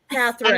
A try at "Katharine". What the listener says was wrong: there's no L. There's no L in her name.